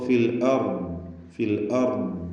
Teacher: അപ്പോൾ ഫിൽ അർദ്, ഫിൽ അർദ്, അർദ് ضادന്റെ ഉച്ചാരണം ഇങ്ങനെ റഖാവത്തുള്ളത് കൊണ്ട് ആ ശബ്ദം ഇങ്ങനെ അല്പം എന്നിങ്ങനെ ഫിൽ അർദ് എന്ന് കേൾപ്പിച്ചുകൊണ്ട്, അർദ് എന്ന് ഖൽഖലയുടെ അവസ്ഥ വരരുത്, ശബ്ദം അങ്ങനെ ചലിക്കാതെ ഫിൽ അർദ് എന്ന് ഉച്ചരിക്കുക.